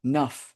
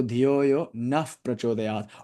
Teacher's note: that Visarga with the Na combined with the Pa becomes Naf